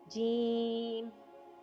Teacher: जीम जबान के दरमियान और ऊपर के तालू के दरमियान से अदा होता है